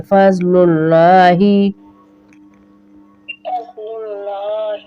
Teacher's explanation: اللہ کے لام کو موٹا کریں گے